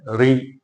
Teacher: दांतों के पीछे मसूड़ों के ऊपर जो कठोर स्थान है, री के उच्चारण में हमारी जीभ वहां पर स्पर्श करती है। री आप बोलकर देखें, ए और आ जो ध्वनियां है वो आपके कंठ से निकलेगी। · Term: मूर्धन ध्वनि